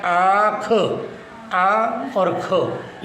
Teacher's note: इसी प्रकार से जो चंद्र बिंदु वाला है ये बन गया आँख, आ और ख। इसे नाक से बोलेंगे आँख, तो इसीलिए इसे अनुनासिक कहा जाता है।